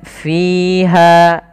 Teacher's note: hati-hati jangan terbaca dengan piha tapi dia Fi alirkan nafas